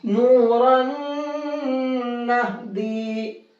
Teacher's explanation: نون میں کر دیں گے مکس، نون کی آواز ہو جائے گی ختم اور اس تنوین کی جگہ نون میں غنہ کر کے پڑھیں گے.